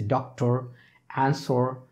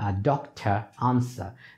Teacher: In American English, they pronounced R, but in British English, they do not pronounce R, but that R is not like our R.